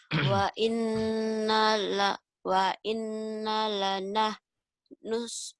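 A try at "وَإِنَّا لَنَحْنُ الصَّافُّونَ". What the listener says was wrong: Sofun. Sof, bukan sopan. Sofun. Panjang, madari disukun. Wa inna lanah nusofun.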